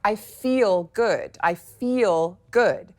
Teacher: But in a general American accent, because that L on the end of the word F-E-E-L is so muscular and full and rich and juicy, it may actually become syllabic. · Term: dark L